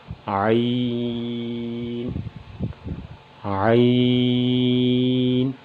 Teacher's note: اس کے بعد ہے حرف عین، عین کے اوپر وہی مد کی علامت ہے تو لہٰذا عین کو 5 الف کے برابر کھینچ کر پڑھیں گے، عین عین۔ عین کا مخرج عین کی ادائیگی کی جگہ وہ حلق کا درمیان ہے